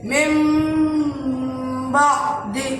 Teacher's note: نون ساکن یا تنوین میم سے بدل کر ایک الف کے برابر گنہ ہو کر پڑھا جائے گا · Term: ابدال